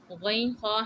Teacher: गैन खा हलक़ के ऊपर वाले हिस्से से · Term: हुरूफ़ हलक़िया